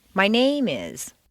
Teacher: if you stress name it sounds as if you're going to continue with more personal information my name is so-and-so my address is such-and-such my blood type